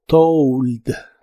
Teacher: Se pronuncia como si tuviera una U después de la O.